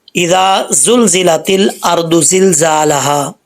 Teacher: پہلے یہ زال ہے نارمل پڑھا جاتا ہے، اس کو سیٹی کے بغیر ہے